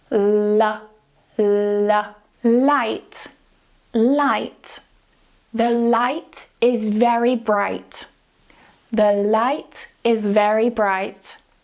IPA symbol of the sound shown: l